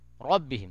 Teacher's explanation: ربہم کے را کو پر کریں گے کیونکہ اس کے اوپر زبر ہے